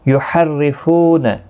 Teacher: را زیر کی وجہ سے باریک پڑھا جائے گا